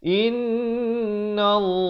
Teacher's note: Innallah dibacakan tebal lafz jalalah ini dua harakat